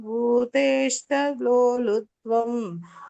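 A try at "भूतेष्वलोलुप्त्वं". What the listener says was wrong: ಭೂತೇಶ್ವಾದ್, ಭೂತೇಷ್ಟ ಅಲ್ಲ ಭೂತೇಶ್ವ, ಎಲ್ಲ ಕರೆಕ್ಟ್.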